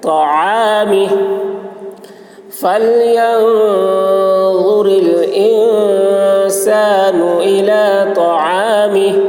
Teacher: طا کی آواز موٹی ہوگی عین حلق سے